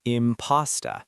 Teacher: The first syllable is stressed.